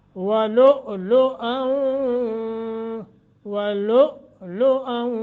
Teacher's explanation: پہلا جو ہے نا وَلُ، اس کو جھٹکا دینا ہے کیونکہ حمزہ ساکن ہے. اور دوسرا حمزہ جو ہے اس کے اوپر تنوین ہے، اس کو آگے واو کے ساتھ ملانا ہے، واو مشدد ہے تو لہٰذا غنہ کر کے پڑھیں.